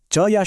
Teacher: जीभ ऊपर तालु से लगती है ना, बस यही तालव्य ध्वनियों की पहचान है। ये एक बहुत प्रिसाइज एक्शन है।